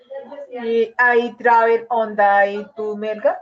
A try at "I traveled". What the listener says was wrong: Sí, la palabra travel. Traveled. Tú tienes que pronunciar como I traveled. Tienes que pronunciar la T, si no estarías diciendo como que yo viajo a Melgar.